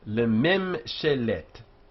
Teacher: Two unaccented closed syllables, lemem, and then she, which is accented, and then let, which is unaccented. And the accented one here, she, is open.